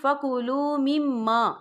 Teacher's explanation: یہاں میم مشدد ہے تو یہاں پر غنہ بھی ہوگا